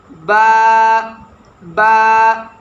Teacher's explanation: اوپر والے ہونٹ اور نیچے والے ہونٹ کو اگر ہم ملا کر پڑھیں تو اس سے با بنتا ہے۔ یہ بات ہمیشہ یاد رکھیے گا کہ با کو جب با کے لیے ہم ہونٹ ملائیں تو ہمیشہ جو ہونٹوں کی تری ہے یہ تری سے ادا ہونا چاہیے، اس لیے اس کا حروف بحری بھی کہا جاتا ہے۔